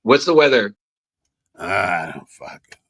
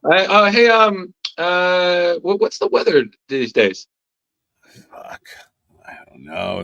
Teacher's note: What you got to do is you got to bring the register down, and you got to garble. You got to get that vocal fry